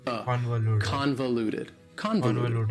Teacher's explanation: That second syllable, again, has that schwa sound, that reduced vowel sound.